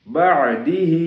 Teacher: بعدہ عین ہے، اور آگے جو ہا ہے وہ سینے والا ہا ہے، حلق والا نہیں